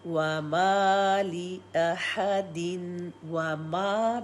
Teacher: मीम की हरकत टू, क्योंकि मीम को ज़बर के साथ अलिफ है, अदरवाइज़ मीम को हम सिंगल करते, अलिफ की वजह से टू।